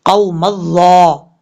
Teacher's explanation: میم کو ڈائریکٹ ظا کے ساتھ کنیکٹ کریں گے